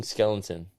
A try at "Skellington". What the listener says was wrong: Skellington. No, you're saying skeleton, no? Skellington. You have to really enunciate the G. Skellington.